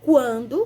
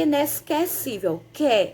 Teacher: Veja só a diferença da palavra quando, que eu pronuncio o Q e o U, e inesquecível, quer. Eu só escuto um fonema, que é o Q. O Q e o U junto fica quer.